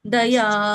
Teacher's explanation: ಒಂದು ಗಳಿಗೆಯಲ್ಲಿ ಹೇಳಬೇಕು ಯಾವುದನ್ನ ಎರಡು ಗಳಿಗೆ ಹೇಳಬೇಕು ಅದನ್ನ ಗಮನಿಸಿ ದಯಾ ದಯ ದ ಒಂದು ಗಳಿಗೆಯಲ್ಲಿ ಹೇಳಿದೆ ಯ ಎರಡು ಗಳಿಗೆಯಲ್ಲಿ ಯ ಹೇಳಿದೆ